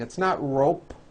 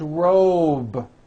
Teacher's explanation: whole word job with a voiced be ending same thing with robe also has a voiced be ending it's not rope with an unvoiced p